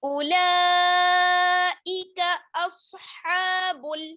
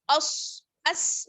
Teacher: حمزہ کو سواد سے ملائیں گے، سواد موٹا. اس نہیں، وہ سین ہو جائے گا، ٹھیک ہے.